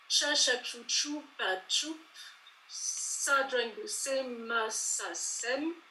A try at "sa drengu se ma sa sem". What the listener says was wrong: Ouais, impeccable, rien à redire.